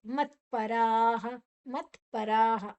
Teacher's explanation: ರಾ ಬೊಕ್ಕ ರಾ ಐನೆರ್ದ್ ಬೊಕ್ಕ ವಿಸರ್ಗದ ಉಚ್ಚಾರಣೆ ಹ.